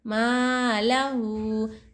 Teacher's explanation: یہاں پہ الٹا پیش ہے, الٹا پیش وہ مدے کے برابر ہوتا ہے, وہ مدے کی طرح ہے, تو الٹا پیش کو بھی ایک الف کی مقدار کھینچ کر پڑھنا چاہیے